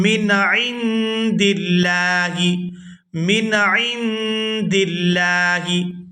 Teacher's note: لفظ اللہ کے لام کو باریک ادا کیا جائے گا کیونکہ اس سے پہلے زیر ہے